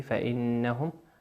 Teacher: النون مشددة بمقدار حركتين في قوله فإنهم، في قوله فإنهم تشد فإنهم ولا تمر مرورا سريعا.